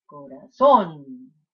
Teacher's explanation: it ends in an on, and you're stressing the last syllable. Corazón. And that's not natural.